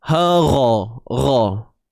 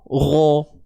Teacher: Ra. Jangan muncul bibir. Kalau muncul bibir dia jadi o. Ro. Buka je mulut, lapangkan.